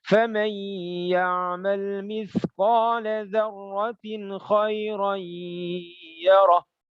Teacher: Ya, harus baca dengung 3 harakat. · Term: idgham bi gunnah